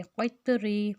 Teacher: طا کے اوپر ہم حروف قلقلہ ہے تو اس کو ہم ہلا کر پڑھیں گے